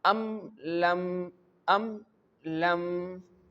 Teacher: This meem is clear before the letter lam. You can feel that when you pronounce this word, the full meem and clear sound of meem will produced. · we pronounce the meme clearly and quickly from the lips without any extra nasal sound. This happens when all letters except ba and meme comes. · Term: Izhar-e-Shafawi, Izhaar Shafawi